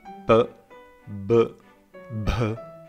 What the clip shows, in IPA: p, b, bh